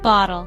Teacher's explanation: Two-syllable word. Stress is on first syllable, bottle